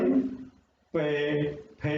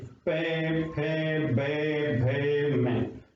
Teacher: हमारे होठ बंद होकर के खुलते हैं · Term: ओष्ठ